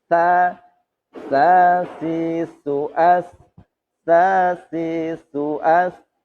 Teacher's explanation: Itu hanya angin, desisan saja. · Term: suara S